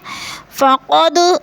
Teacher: حدود میں وہ مدہ ہو رہا ہے، اللہ پر پڑھا جائے گا، حدود اللہ کی اللہ کو پر کر کے پڑھیں گے۔ فقد، دال ساکن ہے، قلقلہ کریں گے،